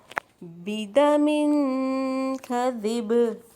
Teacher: اب ہم رکیں گے اگر تو بدم کذب، اب با کے نیچے دو زیر ہے تو اب ہم جزم لگائیں گے تو اس پہ قلقلہ ہوگا